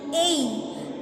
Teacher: Example, in the diphthong A, the tongue moves from the position A to E